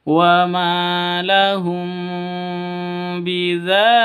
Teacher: Ikhfa Syafawi bacanya samar didengungkan